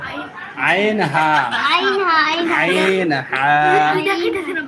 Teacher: হলকের মধ্যখান হইতে আইন হা